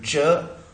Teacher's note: voiceless पैलेटो alveolar अफ्रीकेट, और air stream structure involved is that of complete closure और slow release